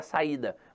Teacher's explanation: a sílaba tônica está na penúltima sílaba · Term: paroxítona